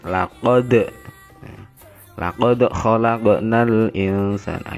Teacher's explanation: Kemudian laqad khalaqnal insana, itu juga dalnya juga berharokat sukun dan harus dibaca memantul qalqalah